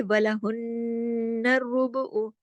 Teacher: हुन्नर नून पे तशदीद है, नून पे गुन्ना होगा, बड़ा गुन्ना होगा